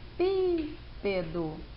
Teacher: Se a gente for perceber, o pi é a sílaba mais forte. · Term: proparoxítona